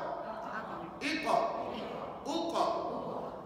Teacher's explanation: Dia guna pangkal lidah. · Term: Qaf